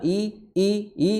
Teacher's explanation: di tenggorokan paling dalam ya di kedua pita suara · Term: hamzah